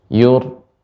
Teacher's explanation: ra yang tebal itu seperti tertahan dia karena getarannya lebih sedikit ya dan halus